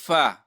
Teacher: فا ادا کیږي د لاندې شونډې د خېټې او د بره مخامخ دوه غاښونو د سرونو نه. بره مخامخ چې کوم دوه غاښونه سرونه دي د هغې نه ادا کیږي.